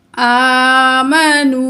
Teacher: یہاں ہم 2 جو ہے کاؤنٹ کھینچ کے پڑھیں گے، یعنی کہ 2 الف کی مقدار ہم نے اس واو کو کھینچ کر پڑھنا ہے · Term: واو مد